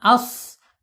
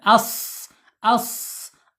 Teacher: mempunyai sofir. Dia saofir itu artinya ada suara ee desisan seperti burung atau angsa.